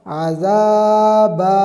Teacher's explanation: زبر زا، عزا، با دو زبر بن، عذابن، آگے وقف عذابا، دو زبر کی تنوین کو وقف میں الف سے بدل دیں گے